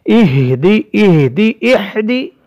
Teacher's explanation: یہ جو ہا ہے اس کی آواز سینے سے نکلتی ہے، حلق کے آخری حصے سے نیچے جو سینے والا حصہ ہے وہاں سے یہ حمزہ اور ہا دونوں حرف ادا ہوتے ہیں، تو ہم اس کی ادائیگی میں کوشش کریں گے کہ ہماری آواز حلق سے نہ ہو، اس لیے اس کا ہم اہتمام کریں گے تاکہ ہم سے یہ غلطی واقع نہ ہو۔